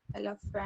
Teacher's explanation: Look at the two schwas. So the first E is making an E sound, but the second E is making a schwa sound. And the A in the third syllable is also making a schwa sound.